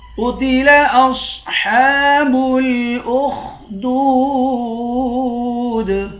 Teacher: قتل، قاف کو موٹا پڑھیں گے۔ اصحاب، صاد کو بھی موٹا پڑھیں گے، ہا پر کھڑا زبر ہے، اس کو 1 الف کے مقدار کھینچ کر پڑھیں گے۔